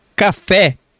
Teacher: as palavras oxítonas são as que têm última sílaba acentuada, a última sílaba tônica, a última sílaba mais forte